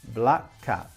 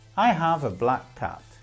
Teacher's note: same consonant sound so we have black cat black cat but when we say it together we only pronounce one of the two consonant sounds